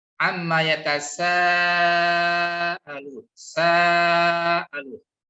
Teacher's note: Ada bacaan panjang disebabkan fathah diikuti alif atau alif sebelumnya fathah. Dalam kaidah makharijul huruf ini disebut dengan al-jauf ya, dengan cara membuka rongga mulut.